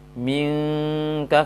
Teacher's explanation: Sangat samar dan halus bunyinya. Minka terasa pangkal lisan naik, minka karena dia ke makhraj kaf